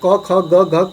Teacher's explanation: तो इन शब्दों के उच्चारण स्थान का बात कर रहा है, तो इसका उच्चारण स्थान क्या होता है। याद रखिएगा, क वर्ग का उच्चारण स्थान जो होते हैं प्यारे, क ख ग घ का कंठ होता है।